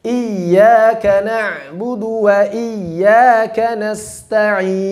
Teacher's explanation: sambil menekan atau sambil meninggikan suara i, tapi ya-nya tetap dialirkan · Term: nabr